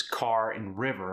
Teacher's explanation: Then there's the dropped R like you get with a British accent.